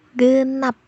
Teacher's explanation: Di situ ada bunyi pada nap. Namun a-nya itu tidak bisa terbuka karena lidah kita langsung membentuk fonem baru yaitu fonem p. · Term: suku kata tertutup